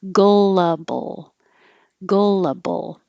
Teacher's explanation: And then when you get to bull, my tongue is making the L position before my lips even open for the B